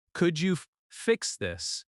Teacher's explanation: Could you fix this? Stress fix slightly. When you use could instead of can, your tone sounds softer and more respectful.